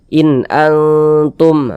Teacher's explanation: huruf nunnya kita baca jelas kemudian dia tidak didengungkan baca pendek saja